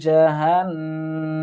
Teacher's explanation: জাহান্নামা ওয়াজিব গুন্না, এখানে আমরা এক আলিফ পরিমাণ টানার চেষ্টা করব